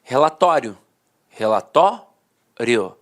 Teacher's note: Falava assim, ó, relatório, relatório. A penúltima sílaba era a sílaba mais forte e a última, de fato, perdia a força. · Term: paroxítona terminada em ditongo